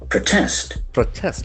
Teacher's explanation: As a verb, we can see the accent shift on the second syllable.